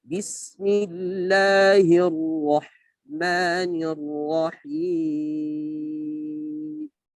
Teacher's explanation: Hinya dibaca tipis, Allah dibaca tebal, ra mufakhamah, ya, dibaca dengan tebal, ya, yang berharakat fathah.